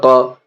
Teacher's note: بادو پشبن، قریب، قاف کے اوپر زبر ہے، زبر کو جلدی پڑھیں گے تھوڑا بھی نہ کھینچیں گے، زبر کی آواز اوپر کو اٹھتی ہے